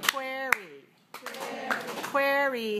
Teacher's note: Query has 2 syllables and it's stressed on the first one.